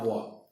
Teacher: दांत और ओष्ठ की सहायता से उच्चारित होने वाला व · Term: दंतोष्ठम